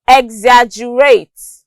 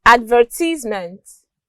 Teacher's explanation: the second syllables of these words are pronounced longer and louder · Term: stress on the second syllable